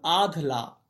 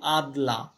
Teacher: আচ্ছা, একটু দেখো, যেমন আধলা ধ, আমরা কি বলছি আদলা দ, ধ ছিল মহাপ্রাণ, এটা অল্প প্রাণে পরিণত হলো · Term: ক্ষিনায়ন, ক্ষীণায়ন